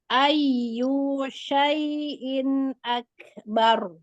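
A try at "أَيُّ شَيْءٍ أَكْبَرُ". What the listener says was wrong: You-nya nggak boleh panjang ya.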